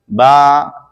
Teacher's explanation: با دونوں ہونٹوں کے تر حصے سے ادا ہوتا ہے